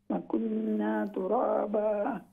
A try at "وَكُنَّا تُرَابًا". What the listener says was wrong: کچھ الف مدہ ضم مس ہو رہے ہیں تو پھر پڑھیں